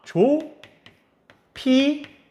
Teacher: 비읍과 히읗이 피읍으로 되는 거네요